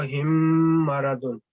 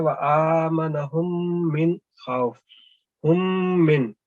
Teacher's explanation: دونوں میم کو ہم مدغم کرتے ہیں، اس کی آواز کو ملا دیتے ہیں آپس میں، اور 2 سیکنڈ تک ہم غنہ کرتے ہیں ناک میں آواز ، میم کی آواز کو ٹھہراتے ہیں، تو اس کو کہتے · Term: ادغام غنہ